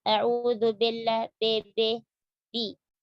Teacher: Sempurnakan kasrah pada huruf ba. Jangan dibaca dengan isba'